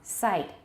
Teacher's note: Sight, very short, and it has Canadian raising.